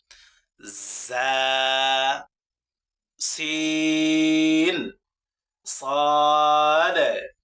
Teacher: জিহ্বার আগা সামনের নিচের 2 দাঁতের পেট ও আগার সঙ্গে লাগিয়ে 3টি হরফ উচ্চারিত হয়